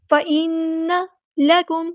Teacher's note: نون پہ غنہ ہو رہا ہے کیونکہ نون یہاں پہ ہماری پاس مشددہ ہے